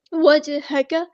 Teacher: جیم ساکن ہے تو قلقلہ ہوگا ، ہاں سمپل ادا کریں گے، کاف کی فتح یعنی زبر · کاف کی فتح یعنی زبر کو لمبا نہیں کریں گے، کاف باریک لائٹ لیٹر ہے